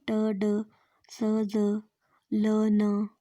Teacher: ये टीथ के थोड़ा पीछे ही होती है। जब टंग अल्वीलर रिज को टच करती है तो कुछ साउंड प्रोड्यूस होती हैं